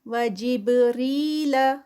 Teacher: وجبریل وجب با کا کلکلا. را جو ہے وہ لائٹ ادا ہوگا اور ساتھ میں یا سے پہلے زیر آ رہی ہے تو 2 کاؤنٹس کا اسٹریچ